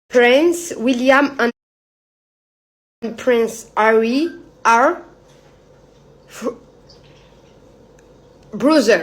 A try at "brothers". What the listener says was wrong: Oui, brothers. Et on prononce le S.